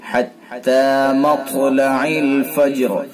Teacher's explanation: طا کو پر کر کے پڑھیں گے، طا کو پر بھی کریں گے یعنی موٹا اور طا کے اندر قلقلہ بھی ہوگا